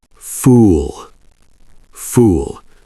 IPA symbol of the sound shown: uː